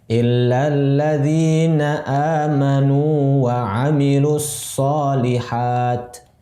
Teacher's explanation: Amanu dimadkan dulu wawunya, kemudian wa, gitu. Jadi jangan diidghamkan.